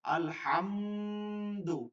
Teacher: যেমন আলহামদু, যাদের গুণা করতে আপনি ধরে রাখতে হবে চাপ দিয়া, আলহামদু, কারণ মিম হচ্ছে ঠোঁটের শুকনা জায়গা, দাল হচ্ছে জিহ্বার আগা, সামনের উপর দুই দাঁত